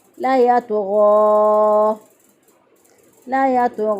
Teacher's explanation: गैन भी मोटा हरफ है और तो भी मोटा हरफ है, हरूफ मुस्तालिया में से हैं। इनके अदायगी के वक़्त ज़ुबान की जड़ पर तारुफ तरफ उठ जाती है, लिहाजा ये मोटे अदा होते हैं।